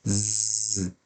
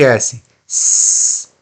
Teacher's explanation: Se você colocar a mão aqui na garganta e repetir esses sons, você vai sentir a diferença. O Z vai vibrar a sua mão e o S vai parecer que não tem nenhum tipo de som